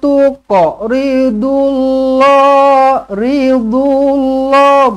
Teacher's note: Tuqa, lantunkan di sini qalqalah sughra. Tuqa ridullah dot baris hadapan.